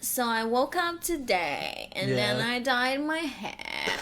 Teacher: It's the no tone of monotone vocal. Paris Hilton girl. Vocal fry monotone.